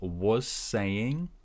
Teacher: so was is short and z at the end, linking again. So was saying sounds like was saying.